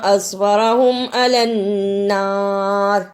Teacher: اصبرہم علی النار، اسے اصبرہم نہیں پڑھنا، صاد کی جگہ پہ سین کی آواز نہیں آنی چاہیے، را کو پر پڑھنا ہے، عین کو صحیح جگہ سے ادا کرنا، نون مشدد ادا کرنا۔